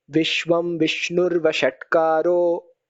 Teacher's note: So actually it's Vishnu Vashatkaraha. That aha, that Visarga became O.